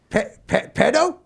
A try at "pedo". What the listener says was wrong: No, not pedo. Pedo. It is spelled P-E-D-O, but you say the D like a T-H. Pedo.